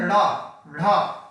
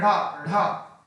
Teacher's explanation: तो हम जीभ को तेजी से पटकते हैं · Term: उत्क्षिप्त व्यंजन